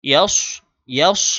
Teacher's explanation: ইয়ার পরে সদ যে উচ্চারণ করবে এটা মোটা করে